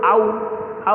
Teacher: आउ जो है औरत वाला, ये अ और ओ से मिलकर बनता है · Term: संयुक्त स्वर